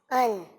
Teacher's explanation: حمزہ میں عین کی آواز نہ ہے, صحیح ہے, سادی سی حمزہ کی آواز